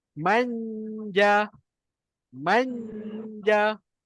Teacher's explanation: Tengah lidah yang naik bukan hujung lidah